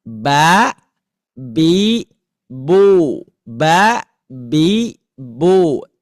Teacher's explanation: tidak ada suara yang keluar dari hidung